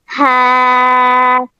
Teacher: हा हलक के आखिरी हिस्से से अदा होगा।